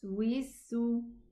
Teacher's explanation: The sin has this beautiful sound of the whistling sound.